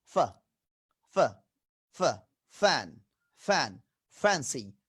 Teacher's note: উপরের দাঁত নিচের ঠোঁট, আপার টিথ লোয়ার লিপ, লেবিওডেন্টাল